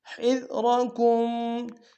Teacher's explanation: دال کو باریک ادا کریں گے را کو موٹا ادا کریں گے